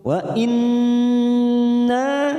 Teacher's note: Wa in nun yang bertasdid bacaan gunna musaddada kita tekan 3 ketuk. Wa inna na fathah diikuti alif 2 harakat.